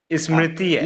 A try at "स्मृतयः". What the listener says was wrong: ये ई नहीं है इसमें। ई है ही नहीं इसमें। हाँ, स्मृति।